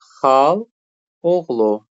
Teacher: xala oğlu birinci A düşəcək. Olacaq xal oğlu. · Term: birinci sait düşür